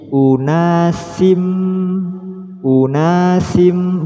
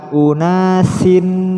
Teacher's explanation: hukum bacaannya adalah am bunah cara mudah mempraktikkan am bunah adalah memasukkan suara tanwin pada mim